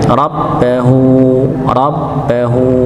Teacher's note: ba dengan tasydid ya, maka ini tidak didengungkan tapi dihentakkan saja ya